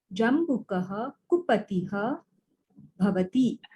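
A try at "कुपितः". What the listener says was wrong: Not kupatiha, kupitaha. Kupitaha, angry.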